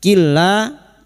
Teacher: nun sukun bertemu lam idgam bila guna hanya masuk tanpa mendengung